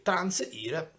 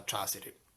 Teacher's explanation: il fatto che transire la N, questa nasale alveolare, sia caduta e noi abbiamo trasiri, è una cosa normale, perché quando c'era il digramma, il gruppo consonantico NS, diciamo che solitamente i latini questa N non la pronunciavano.